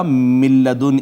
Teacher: کی بجائے پڑھا جائے گا من لدن، اس وجہ سے کہ نون تو یہاں نہیں رہا، وہ لام میں اس کا ادغام ہو گیا